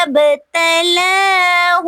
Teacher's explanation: مبتلاہ با پہ قلقلہ ہو رہا ہے